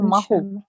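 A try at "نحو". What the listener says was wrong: Nahu, with an N. Nahu.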